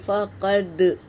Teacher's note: دال پر سکون ہے، یہ قلقلہ ہے، پڑھتے وقت آواز ٹکرائے گی۔